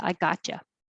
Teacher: The T and the Y make a ch.